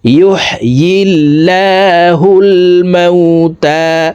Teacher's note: ইয়ার উচ্চারণ জিহ্বার মধ্যখান থেকে পড়তে হবে।